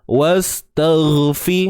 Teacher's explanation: Huruf sin jangan keluarkan hujung lidah. Tak perlu, duduk dalam je. Okey, lidah duduk dalam.